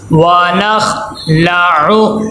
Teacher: आखिर में आइन है, इसको लंबा नहीं होना चाहिए क्योंकि हरकत गैर मद्दा है। अक्सर बच्चे ये गलती करते हैं कि आखिरी हर्फ को जब अदा करते हैं तो उसके ऊपर अगर हरकत गैर मद्दा हो तो उसको लंबा कर देते हैं।